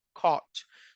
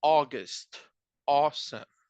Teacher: So if you pay attention, this combination of sounds, AU or AW, they have a sound like an O. Like it's like an O, but more like open. It's like un bostezo, diría yo, like a yawning kind of sound.